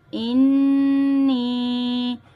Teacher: نون مشدد کا گنہ اور یا مدہ دونوں کو کھینچ کے پڑھیں گے، انی۔ میم نون زیر من، نون الف زبرنا مننا، الف مدہ کو کھینچ کے پڑھیں گے اور نون مشدد کا گنہ، مننا، ٹھیک ہے۔